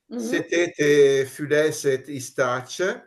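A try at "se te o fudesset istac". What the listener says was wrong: Dica o fudesset, o, non u.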